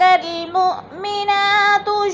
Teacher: جاءک المؤمنات یبایعنک علی ان لا یشرکن باللہ شیئا۔ مؤمنہ، حمزہ ساکنہ ہے، جھٹکا دے کر پڑھیں گے